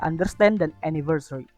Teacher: Lalu ada third syllable stress di mana stressnya itu ada di suku kata ketiga